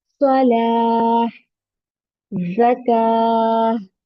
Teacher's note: तो जब हम कुरान की रीडिंग करते हैं, तो जब ये ता वाले वर्ड पर हम स्टॉप करते हैं ड्यूरिंग द रेसिटेशन, तो इसको हम हा में कन्वर्ट करके साकिन के साथ करते हैं